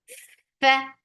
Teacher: The fatha is short, but there is hums. There is flow of breath before this fatha. So give hums more time than fatha.